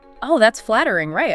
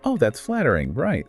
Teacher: a rising tone on right can make it sound genuinely questioning, maybe a little surprised, whereas a falling tone can make it more rhetorical, implying, yes, that is indeed flattering.